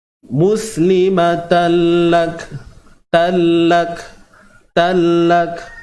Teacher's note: Tanwin bertemu lam. Idgham bila gunnah. Memasukkan, idgham ni memasukkan bila gunnah, tanpa dengung.